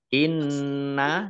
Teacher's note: Nun tasdid dibaca gunah atau mendengung ditahan dua harakat